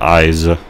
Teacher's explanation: I add an extra vowel just to be able to pronounce the Z more clearly